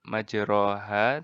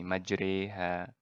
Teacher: yang kita sebut dengan imalah Apa itu imala Eh malah adalah mencondongkan bunyi bacaan baris Fathan lebih hampir kepada bunyi baris kasrah jadi bacaannya barisnya Fatah tapi kita mencondongkan nya jadi mirip kasrah